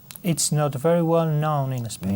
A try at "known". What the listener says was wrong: Known. Ciérrame más la O. Known.